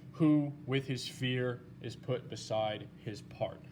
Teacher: 2 syllables with an unstressed and a stressed syllable, and together, 5 of them in a row in each line create what's called iambic pentameter